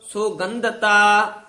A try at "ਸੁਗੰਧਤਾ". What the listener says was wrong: ਸੁਗੰਧਤਾ ਦੱਦਾ ਨਹੀਂ ਵਿੱਚ ਲਾਉਣਾ, ਧੱਦਾ ਉਚਾਰਨ ਕਰਨਾ ਹੈ। ਰੂਪ ਧੂਪ ਸੁਗੰਧਤਾ, ਕਾਪਰ ਭੋਗਾਦ।